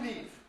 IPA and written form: liːv (leave)